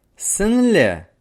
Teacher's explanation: обычного звука на кончик языка при поднимается к верхним зубам то при произнесении звука н кончик языка опускается К нижним зубам задняя часть языка тесно прижимается к заднему нёбу